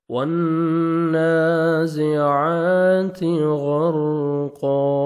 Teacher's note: نون مشدد ہے، غنہ کریں گے اور نون کو کھڑا زبر ہے، 1 سیکنڈ آپ نے کھینچنا ہے، 1 الف کے برابر۔